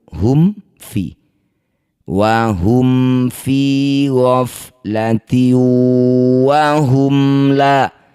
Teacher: Mim sukun bertemu fa disebut bacaan namanya idhar syafawi. Cara bacanya bunyi mim, baca dengan jelas tanpa dengung.